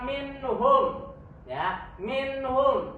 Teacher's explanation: n-nya itu dibaca dengan jelas, tidak samar, tidak juga hilang. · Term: izhar halqi